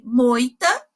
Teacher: o O é mais forte e o I é mais fraco, então o I é uma semivogal